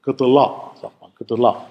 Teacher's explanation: die Zunge wird bei der Artikulation des Ls nach hinten gezogen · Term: velarisiert